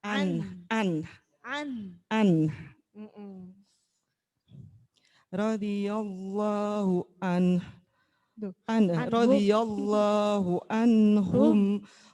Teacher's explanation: Jadi ditekan dulu annya ya, baru dikasih h.